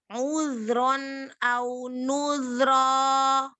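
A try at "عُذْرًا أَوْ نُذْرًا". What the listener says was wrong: Zal yang kedua, yang pertama tambahkan lagi rokhwah seperti yang kedua. Yang kedua bagus. Ya, jadi jangan terburu-buru ya. Kasih sifatul huruf itu jangan terburu-buru, dinikmatin.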